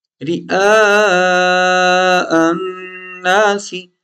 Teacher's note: رئا پہ ہم لمبا کریں گے، رئاء الناس، کیونکہ یہاں پر بڑی مد ہے، یہ بڑی مد کا نشان ہے، تو اس کو ہم نے لمبا کرنا ہے، رئاء الناس.